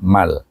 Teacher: Man wa minhum man bertemu dengan huruf lam. Lam adalah huruf idgham tapi tidak boleh didengungkan. Maka dibaca dengan idgham bila guna.